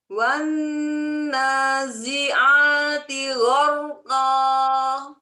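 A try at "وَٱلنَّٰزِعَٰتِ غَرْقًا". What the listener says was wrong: Jangan terlalu tutup biar nggak naber. Kayak tadi. Longgarkan dikit Cuma kalau terlalu monyong pas mengucapkan wow jadinya seperti ini suaranya. Wan lembut itunya. Jadi dia lembut kecuali dhammah. Memang kalau dhammah itu monyong sempurna. Memang sempurna. Tapi tidak sebagaimana dhammah.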